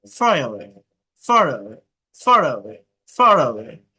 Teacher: ব্রিটিশরা শব্দের শেষে আর উচ্চারণ না করলেও যদি সেই শব্দের ঠিক পরের শব্দটি একটি ভাওয়েল দিয়ে শুরু হয়, তবে তারা দুটি শব্দকে জোড়া দেওয়ার জন্য আর উচ্চারণ করে। একে লিঙ্কিং আর বলে।